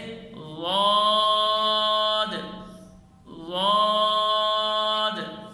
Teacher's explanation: زبان کی کروٹ دراز کر کر اوپر کی داڑھوں کی جڑ پہ لگائیں، نرم کر کے ادا کریں ، جس طرح وا کی آواز ہوتی ہے بالکل بعینہ ضاد · دال کے مخرج میں زبان نہیں لگائیں گے اور ادنی حلق سے بھی ادا نہیں کریں گے، مد کر کر پڑھیں گے، آخر میں قلقلہ کریں گے